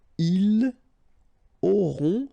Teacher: ils auront, final T not pronounced